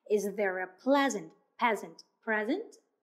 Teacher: Put your hand on your throat and say P. That's voiceless sound.